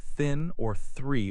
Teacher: the ch sound in chair, the sh sound in ship, and the th sound in words like thin or three are voiceless.